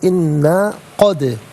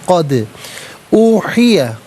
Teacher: دال ساکن ہے لیکن حرف قلقلہ ہے تو آواز لوٹتی بھی محسوس ہونی چاہیے